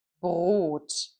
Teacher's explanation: So, here it's very important that we use the soft throat sound, for example, in the word bread in German, it's Brot. So, here we have a r, but not a strongly rolled r as in other languages. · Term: das r